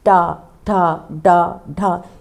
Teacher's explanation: ट जो ऊपर तालू का कठोर भाग है उस स्थान को छूती है। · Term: मूर्धन्य